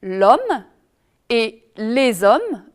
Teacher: On va dire l'homme et les hommes, donc on fait la liaison